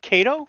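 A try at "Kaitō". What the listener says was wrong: It makes the O longer, so it will be pronounced Kaito.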